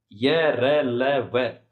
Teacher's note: स्वर तंत्री में कंपन होता है। कंपन होता है उन्हें सघोष व्यंजन कहते हैं।